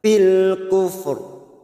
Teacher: di sini ada ro dibaca tafkim atau ro tebal. Ro mati karena wakaf dan didahului huruf sukun selain huruf ya yang huruf sebelumnya berharokat dhammah.